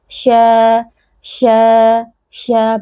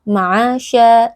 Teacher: Ma'asya karena dia adalah huruf yang keluar dari wasatul lisan, dari tengah-tengah lidah. Jadi mengucapkan huruf shin dengan benar adalah dengan menaikkan bagian tengah lidah kita. Kemudian kita menyebarkan angin di dalam mulut kita karena huruf shin punya sifat tafasyi, ya, angin yang menyebar di dalam mulut kita.